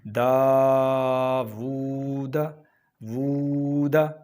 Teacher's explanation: داود، واو پر الٹا پیش ہے، اس کو ایک الف کے برابر لمبا کرنا ہے۔ داود، وود، ہونٹوں کو گول کر کے واو کو پڑھنا ہے